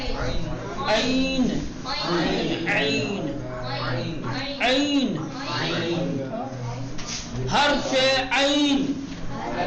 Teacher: تھوڑا سا آواز میں کھچاؤ ہوگا · حلق کے بیچ سے درمیان حلق سے نرمی کے ساتھ تلفظ کرنا ہے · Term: حرف عین